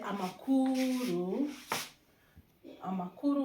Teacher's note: we don't Roar it like in French or English so it's soft · so you see that the air is not really very very strong